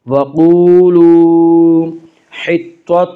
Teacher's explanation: واو مدہ کو ایک الف کے برابر کھینچ کر پڑھیں گے۔ وقولوا حطۃ، تو کو پر پڑھیں گے، تو حروف مستعلیہ میں سے ہے، حروف مستعلیہ 7 ہیں جن کا مجموعہ خص ضغط قز ہے، یعنی خا صاد ضاد غین طا قاف ظا، یہ 7 حروف ہمیشہ ہر حال میں پر پڑھی جاتے ہیں۔